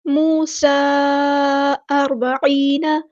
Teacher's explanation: را یہاں پہ ہمارا ہیوی لیٹر ہے، پورا ادا کریں گے، با لائٹ لیٹر ہے، عین کو وسطی حلق مڈل تھروٹ سے ادا کرنا ہے، اور یا مد آ گیا تو یہاں پہ مد اصلی کریں گے، نون کی زبر کو لمبا نہیں کریں گے، حرکات کو لمبا نہیں کرتے۔